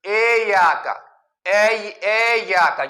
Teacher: اور اسی طرح شروع میں اس کو مجہول پڑھنا ٹھیک نہیں ہے، یعنی ایاک، ایاک، یعنی اس میں ای کو اے بنا دیتے، ایاک، ایاک، یہ ٹھیک نہیں ہے۔